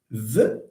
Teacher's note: V is voiced there is vibration